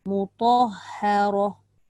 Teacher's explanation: Bukan ha tu nipis je, yang tebal je ta dengan ra, tengah tu tak.